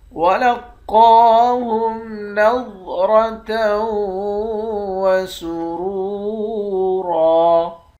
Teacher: قاف کو موٹا پڑھیں گے، قاف کے اوپر کھڑا زبر ہے، اس کو ایک الف کی مقدار کھینچ کر پڑھیں گے۔ ضاد اور را ان دونوں حرف کو موٹا پڑھیں گے، تا کو واو کے ساتھ ملا کر ادغام مع الغنہ کریں گے۔